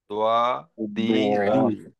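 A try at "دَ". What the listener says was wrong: দ হ্যাঁ গোল হয়ে যাচ্ছে দ দি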